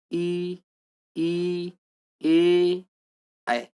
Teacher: चारों का उच्चारण कहाँ से, जीभ के अगले भाग से हो रहा है, इसलिए अग्र स्वर कहा जाता है।